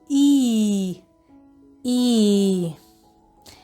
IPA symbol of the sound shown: i: